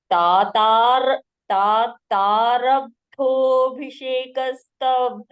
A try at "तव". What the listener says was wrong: Only one mistake. Tava. Only. Not tav. Tava.